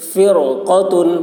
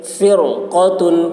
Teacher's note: رائے ساکنہ کے بعد اسی کلمہ میں حروف مستعلیہ میں سے قاف آ رہا ہے اس لیے را کو پر پڑھیں گے